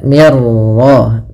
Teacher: Maka di sini langsung ke ra tanpa lagi terdengar suara mim nunnya. Ya, maka mir ra, mirnya tipis, ra-nya tebal